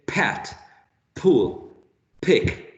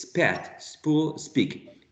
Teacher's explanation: So this aspiration or plosion is present only in initial position.